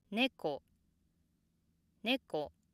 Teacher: After the downstep, the pitch stays low until the end of the word.